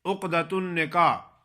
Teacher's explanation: آخر میں ہا کو ادا نہیں کرتے۔